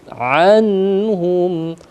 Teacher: nun mati bertemu dengan ha izhar tipis eh jelas ya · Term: izhar halq